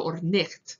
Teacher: it's a fricative, it's not a velar stop, like a g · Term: ch sound